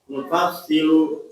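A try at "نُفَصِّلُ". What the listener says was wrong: Shotnya lebih tebal ya. Nufassilu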